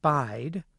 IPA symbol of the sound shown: aɪ